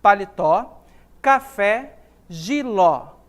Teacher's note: a palavra paletó possui como sílaba tônica é a última